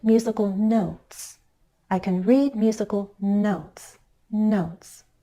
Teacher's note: Go up a little and glide down.